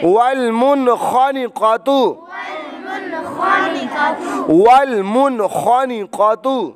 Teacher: نون ساکن کے بعد حروف حلقی میں سے خا آنے کی وجہ سے اظہار بغیر گننے کے